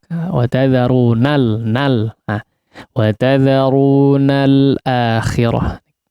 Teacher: Lamnya agak perlahan ya maksudnya. Tidak perlu agak menghantak.